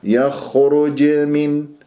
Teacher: الجيم ساكنة مقلقلة قلقلة صغرى في وسط الكلام